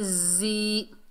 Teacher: یا ساکن ہے یہ یا مدہ ہے، ایک الف کی مقدار کھینچ کر پڑھیں گے زی. یہاں پر زا دو جگہ پر آ رہا ہے تو آپ نے یہ خیال کرنا ہے، اس کو سختی اور سیٹی سے ادا کرنا ہے.